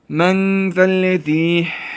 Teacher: cezimli nun harfini genizden çıkartarak yani belli etmeyerek gizleyerek okuyoruz